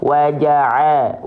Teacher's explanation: Pastikan ain dilafalkan dari bagian tengah tenggorokan kita.